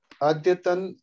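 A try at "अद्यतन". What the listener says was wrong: Adyatana. Atra Halantana. So it's not Adyatan. Adyatana.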